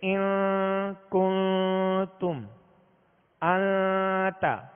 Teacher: تو نون ساکن یا تنوین کے بعد حروف اخفا میں سے کوئی بھی حرف آ جائے تو وہاں اخفا کریں گے، یعنی غنہ کریں گے. 1 الف کی مقدار آواز کو ناک میں لے جا کر چھپائیں گے